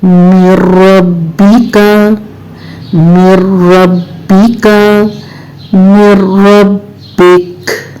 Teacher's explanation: नून साकिन के बाद रॉ आ गया जो कि यरमलून में से है, तो यहाँ इदगाम तो होगा लेकिन गुन्ना नहीं होगा